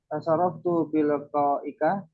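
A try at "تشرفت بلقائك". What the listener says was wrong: La. Tasharraftu biliqa'ik. La, turun. Tasyarraftu biliqa'ik. Nah, jadi kalau seandainya memberikan pernyataan, turun nadanya. Tapi ketika bertanya, naik. Nah, tasyarraftu biliqa'ik.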